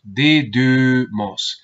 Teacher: Aquí hay que hacer un esfuerzo en cuanto a la pronunciación porque realmente no se trata de una U, sino de una U más cerrada